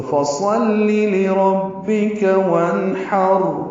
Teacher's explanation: یہ را وقفاً وصلاً پر ہے کیونکہ را ساکن ہے اور اس سے پہلے زبر ہے · نون ساکن پڑھا جا رہا ہے کیونکہ نون ساکن کے بعد ہا حروف حلقی میں سے ہے، حروف اظہار میں سے ہے، تو جب بھی نون ساکن کے بعد حروف حلقی میں سے کوئی حرف آئے تو وہ نون ساکن پہ اظہار کیا جاتا ہے، اسے اظہار حلقی کہتے ہیں۔ ہا وسط حلق سے ادا ہوگا، را سے ملائیں گے